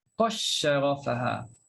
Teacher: terus masuk dalam huruf yang selepas dal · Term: idgham